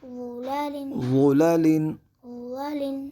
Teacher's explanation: ہم نے ضا کو پر پڑھنا ہے کیونکہ ضا حروف مستعلیہ میں سے ہے اور لام کو باریک پڑھیں گے کیونکہ یہ حروف مستفلہ میں سے ہے اس لیے ان کو باریک پڑھا جائے گا.